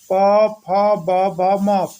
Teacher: प वर्ग का उच्चारण स्थान प, फ, ब, भ, म। प वर्ग का उच्चारण स्थान ओष्ठ होता है